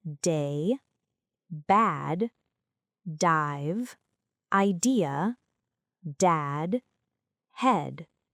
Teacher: D, as in day, bad, dive, idea, dad, head. This is a voiced stop sound. The tongue touches the upper palate and releases with vibration. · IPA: /d/